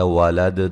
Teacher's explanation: دال پہ قلقلہ کریں گے وقف کی صورت میں ، اور یہ وقف لازم ہے، یہاں وقف کریں گے لازم،